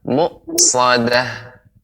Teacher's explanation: pengucapan hamzah benar-benar kita berikan haknya, ya, benar-benar jelas, berhenti, artinya tertahan, bukan berhenti, tertahan